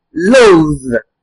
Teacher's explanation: there was a V effect produced at the end of the word. This is because T-H-E produces a V sound.